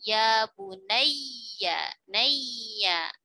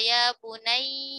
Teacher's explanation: Tapi kalau bukan pada idgham bi gunnah, ya bertasydid itu ditekan. Ya, ditekan tapi tidak ditahan.